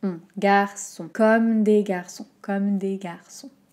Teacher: Attention à la voyelle nasale finale, on. Donc la bouche est bien ronde, l'air du nez, la langue est un peu reculée.